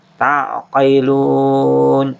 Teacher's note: ini mad arid disukun sampai 6 harokat, boleh dibaca sampai 6 harokat.